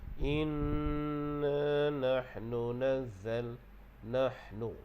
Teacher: kalau kita sebut ha tu, getarannya di tengah kerongkong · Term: ha pedas